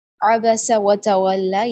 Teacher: با اور سین باریک ہے، اور ان میں سے کوئی بھی کسی کی بھی حرکت لمبی نہیں ہوگی